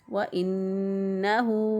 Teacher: نون مشدد کی ناک میں ایک الف کے برابر آواز ٹھہراتے ہوئے ادا کریں گے۔